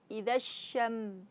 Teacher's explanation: tempat keluarnya dari tengah lidah bukan dari dua bibir. Kemudian harus ada syaren syin bersifat tafasyi.